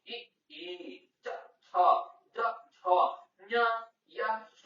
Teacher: ಅಂಗಳಿನ ಮುಂಭಾಗ ವಿನ ಸಹಾಯದಿಂದ ಹುಟ್ಟುವುದರಿಂದ ಇದನ್ನು ತಾಲವ್ಯ ಎನ್ನುವರು